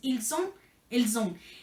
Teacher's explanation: Aquí también tenemos una aleación, por eso se escucha la S. Aunque no empieza con S, se escucha la S porque es ils ont, elles ont.